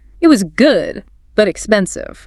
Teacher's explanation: Fall, rise, intonation. Your voice goes down then back up.